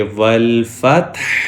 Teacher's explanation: واو زبر لام، ول، فا زبر تا، فت، والفت، حا پیش ہو، والفتح۔ جب ہم سٹاپ کرتے ہیں تو آخری حرف کی زبر زیر پیش ختم ہو جاتی ہے، پیش کو نہیں پڑھیں گے، تو وقف کی حالت میں ہم پڑھیں گے والفتح۔